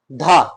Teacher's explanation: दंत महाप्राण और सघोष